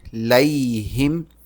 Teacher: اس کو لئی پڑھنا ہے، لے نہیں پڑھنا. ہم، اس جزم والے میم پر اخفا ہوگا.